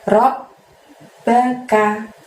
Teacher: Jadi robnya ditahan, ditekan 2 harokat baru bunyi ba ya.